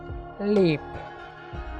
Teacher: Lateral, tip of the tongue makes firm contact with the teeth ridge and air passes through the sides of the tongue. Tip of the tongue teeth ridgeൽ contact ചെയ്യുകയും ഇതേ സമയം ടങ്കിൻ്റെ ഇരുവശങ്ങളിലൂടെയുമായി air pass ചെയ്യുകയും ചെയ്തുകൊണ്ടാണ് ഈ ശബ്ദം ഉച്ചരിക്കുന്നത്.